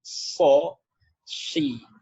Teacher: Tapi tebalnya tebal ketika kasroh. Tetap so ya, si ya, ketika pengucapannya tetap agak tebal ya. Yang membedakan hanya vokalnya saja, ke o dan ke i.